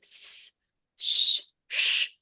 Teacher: none of them use the voice the vocal cords it's all just air sounds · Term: sibilance, sibilants